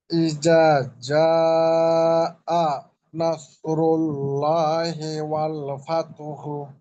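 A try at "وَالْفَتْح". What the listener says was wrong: ফাতহু না, আমি বললাম কি, যদি হাতে থেমে যান তাহলে হাটাকে মিলিয়ে ফেলবেন, তখন হু না বলে ওটাকে বলতে হবে ফাত। ফাত, হাটার হায়ের উচ্চারণ বাতাস বের করে ওটা নিয়ে আসতে হবে, কিন্তু ফাতহু বলা যাবে না, ফাত বলতে হবে।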